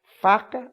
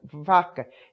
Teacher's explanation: porque as duas só se diferenciam porque uma é surda e outra é sonora